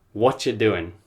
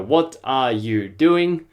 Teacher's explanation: A lot of native speakers will take away the are. So then you've just got what and you, and then they'll push them together and they'll say, what you doing?